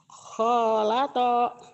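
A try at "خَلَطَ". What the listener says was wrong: Pendek. Yang panjang khonya dong. Kholato. Yang panjang A-nya doang sama ujungnya. Yang pendek.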